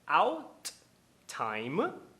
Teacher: Ele faz a parada glotal.